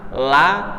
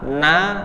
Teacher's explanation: Kalau lam agak ke depan, kalau nun agak ke belakang sedikit ya